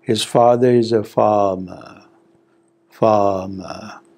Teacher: If I have to prolong, extend the duration of farmer, then you will hear the falling tone more clearly.